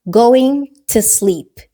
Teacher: You kind of merge the word to with sleep and you take away the O.